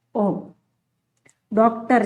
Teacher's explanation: वर्तुलित होगा क्योंकि इसमें हमारे होठ इसे बोलते समय गोलाकार हो जाते हैं। इसे गृहीत स्वर कहा जाता है।